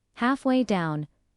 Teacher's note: Stress is on, half and down.